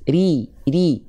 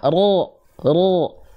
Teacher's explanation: kalau RI dia kasrah dia terhampar pangkal lidahnya tipis